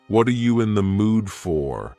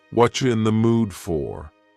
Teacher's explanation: Whatcha is what are you in the mood for? Here, the word you has been reduced to cha.